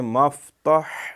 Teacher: لیکن دوسرا جو میم جب پڑھیں گے اللہم، ماں کو فا کے ساتھ ملا دیں، مفتح، یہ ہا جو ہے اس کو یہ گلے سے رگڑتا ہوا نکلے گا۔